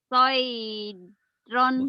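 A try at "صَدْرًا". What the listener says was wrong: Bukan soy. Itu ba. Sobron. Enggak. Lupa huruf ya.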